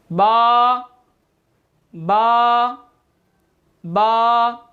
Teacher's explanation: बा जो है ये दोनों होंठों के तर हिस्से से अदा होता है, ये दोनों होंठों के तर हिस्सा से।